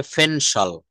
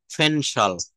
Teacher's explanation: শব্দের শুরুতে পি থাকলে সেটা কিন্তু পি না হয়ে প না হয়ে ফ হবে। ফ এর মত উচ্চারণ করতে হবে।